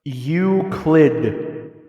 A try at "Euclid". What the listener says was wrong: the L is after the C.